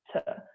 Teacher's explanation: And what the biggest noticeable difference in sound is at the end of a soft T, you'll hear a little like hiss